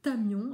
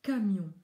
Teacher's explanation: Donc, il va falloir qu'ils perdent cette habitude d'utiliser le bout de la langue, l'apex, qu'ils placent en général derrière les dents du haut, au lieu de mobiliser la base de la langue, parce que là, c'est bien la base de la langue qui travaille et non l'apex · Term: le son K